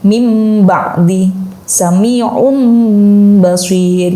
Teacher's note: yang tanwin awalnya yang seharusnya dibaca sami'un tapi ketemu dengan karakter huruf ba, maka dia harus menyesuaikan menjadi mim juga. Nah, menjadi mim karena mim dan ba adalah jodohnya iqlab gitu.